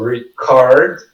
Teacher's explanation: The co é a sílaba mais forte.